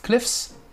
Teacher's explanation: le cliffs, c'est un i très très très bref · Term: i explosif